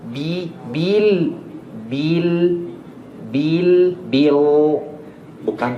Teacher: tasdid di huruf ba lebih panjang sedikit